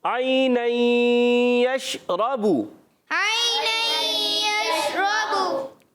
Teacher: عین ادا ہوتا ہے حلق کے درمیان والے حصے سے